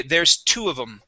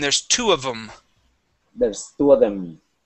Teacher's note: the word em stands for them okay we shorten that down